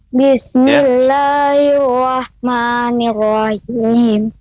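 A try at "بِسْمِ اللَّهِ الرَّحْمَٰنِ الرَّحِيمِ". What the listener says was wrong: Ya, rahim. Bapak, pengucapan rahim lebih tipis lagi. Ya, pengucapannya rahim. Bismillahirrahmanirrahim.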